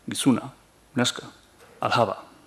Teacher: Azken aurreko silaban, hitzaren azken aurreko silaban markatzea.